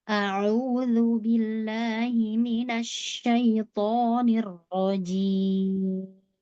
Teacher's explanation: Huruf ain. Katup tenggorokan ditekan.